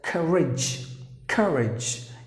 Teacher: You have to stress in the beginning. So courage, that's how you have to pronounce the word, not courage.